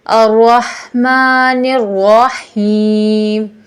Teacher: را میں ہلکا سا رول ساؤنڈ، جیسے الرحمن الرحیم۔